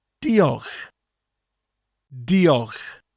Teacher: at the end of the word you have that lovely CH sound which comes from the back of your throat